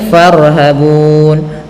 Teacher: ra tafkhim, yaitu ra yang dibaca tebal